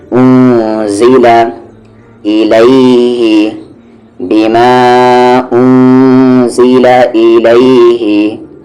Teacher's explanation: زا حروف اخفا ہے، یعنی نون ساکن کی آواز کو ہائیڈ کریں گے